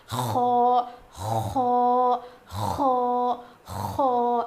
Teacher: اس کو تھوڑا موٹا پڑھیں گے، اس کی آواز تھوڑی اوپر جائے گی، اور جب ہم خو پروناؤنس کریں گے تو اس میں تھوڑی سی گاگلنگ ساؤنڈ آئے گا، یعنی کھردری آواز آئے گی. زیادہ نہیں، تھوڑی سی.